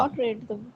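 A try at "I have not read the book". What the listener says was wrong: রিড নয়, রেড হবে উচ্চারণ, সবসময় হ্যাভ থাকলেই রেড উচ্চারণ করবে। I have not রেড the book, ঠিক আছে।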